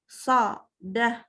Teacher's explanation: Antara so dengan da itu panjang lebar bibirnya sama.